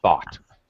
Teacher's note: It's a voiceless th